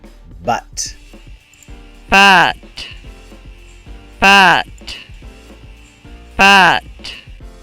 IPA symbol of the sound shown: ʌ